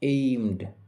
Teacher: ম সাউন্ডের পরে ইডি রয়েছে, তাই এই ইডি এর উচ্চারণ হবে ড এর মতো